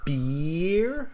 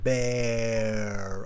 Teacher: So beer, I pull on my mouth like a smile, beer. And then with the animal, it's bear. I open my mouth into a more of a round shape.